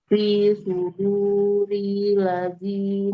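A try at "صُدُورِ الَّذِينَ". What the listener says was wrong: Ril tasdid lam. Fi suduril ladina.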